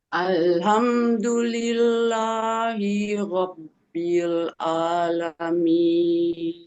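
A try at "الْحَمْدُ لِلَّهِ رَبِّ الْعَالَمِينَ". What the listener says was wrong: Iya, masih ada panjangnya.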